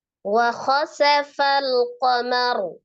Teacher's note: Ro-nya disukunkan karena waqaf. Ro sukun sebelumnya fathah di huruf mim maka dibaca dengan tebal ya.